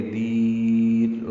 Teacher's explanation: را باریک ہے کیونکہ اس سے پہلے یا ساکن آ گئی ہے ، یہ وقفاً را باریک ہے، ملانے کی صورت میں را